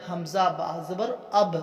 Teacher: ابصارہم، با سے پہ با پر کلکلا کریں گے، حمزہ با زبر اب، با پہ کلکلا کریں گے